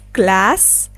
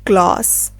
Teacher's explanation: in American English, the A sound is a bit shorter, while in British English, the A sound is a bit broader